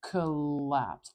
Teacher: this is another time that English spelling is lying to us we have two L's here I'm not saying that sound extra long